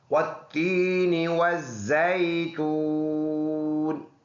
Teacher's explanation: نون کے نیچے زیر ہے، وقف کی وجہ سے اس کو ساکن کر دیں گے